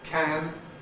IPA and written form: kæn (can)